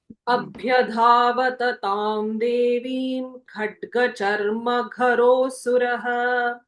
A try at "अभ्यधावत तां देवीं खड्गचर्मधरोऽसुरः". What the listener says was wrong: Chatma khadgacharmadharo, not garo.